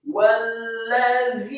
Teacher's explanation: Walladzina, setelah lam yang tasydid dan satu harokat, kemudian huruf za yang tipis, lidahnya agak keluar sedikit